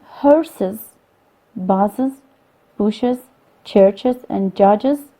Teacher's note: The insertion of a vowel here affects the syllable structure in fact adding a syllable to the word